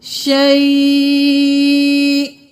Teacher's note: جب ہم وقف کر دیں گے تو یہاں پہ حمزہ ساکن ہو جائے گا